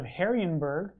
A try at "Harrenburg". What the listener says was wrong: Harrian? You said Harrian. It's Heron. Harrian is what you said.